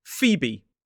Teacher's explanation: Two syllables, stress on the first. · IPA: /ˈfiːbi/